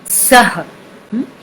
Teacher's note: So here it's not a nasal sound at the end, it is an aspirate. You push out your breath.